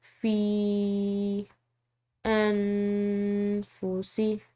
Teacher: فا کے بعد یا ساکن ہے، ساتھ میں اوپر چھوٹی مد ہے، تو اس کو ہم نے کھینچ کر ادا کرنا ہے